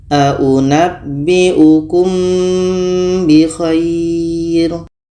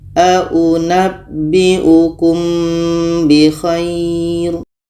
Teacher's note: ini Ikhfa Syafawi kita dengungkan ketika kita sebut huruf mim kita sudah merasakan huruf ba